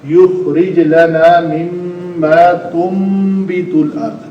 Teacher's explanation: اقلاب کا قاعدہ ہے اگر نون ساکن کے بعد با آ جائے تو اقلاب ہوتا ہے. اس نون کو میم سے بدل کر پڑھا جاتا ہے.